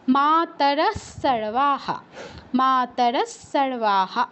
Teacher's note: বিসর্গর পর সর্বাহা আছে, প্রথম অক্ষর দন্তস, তাই বিসর্গস্থলে দন্তস হসন্তর মতো উচ্চারণ হবে